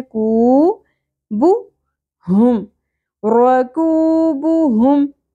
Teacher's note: واو حرف مدہ ہے، ایک الف کے برابر کھینچنا ہے